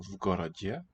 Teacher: because g there the initial is voiced, then the v will stay voiced as well